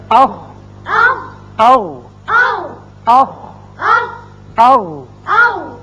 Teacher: اس میں ہے اخ، او، اخ، او. یعنی دونوں مخارج میں آواز حلق کے اوپر والے حصے میں جا کر رکی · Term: اقصی حلق